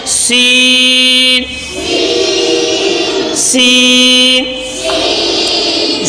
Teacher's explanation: जबान का नोक और ऊपर के दोनों दांतों का अंदरूनी किनारा इससे सीन अदा होता है